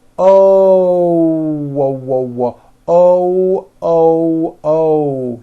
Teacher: to teach foreign speakers how to pronounce the o sound correctly when an American speaker makes an O we end the vowel with a small W sound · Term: the hidden W